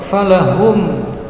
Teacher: panjangnya dua harokat, falahum mim sukun bertemu alif ih idhar safawi, idhar safawi jelas tidak mendengung pendek